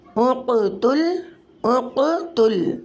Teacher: حروف قلقلہ ساکن حالت میں اس کلمے کے درمیان میں آ رہا ہے قاف ساکن حالت میں، تو یہاں قلقلہ صغریٰ ہوگا۔ قلقلہ صغریٰ کے معنی ہے درمیانہ قلقلہ، اس کلمے میں درمیانہ قلقلہ ہوگا